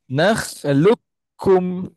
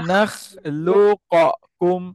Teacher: idgham masuk huruf pertama ke dalam huruf kedua